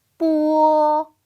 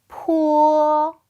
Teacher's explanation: 입술 소리 수능은 두 입술이 서로 붙었다 떨어지면서 난다 해서 붙여진 이름이고요 자 첫 번째 거부터 볼까요 요거는 발음이 뜨